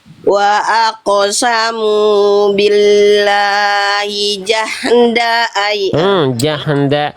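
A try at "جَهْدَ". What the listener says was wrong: Jahda. Mantul pada huruf H sukun nggak boleh. Ya. Yang mantul cukup kof aja.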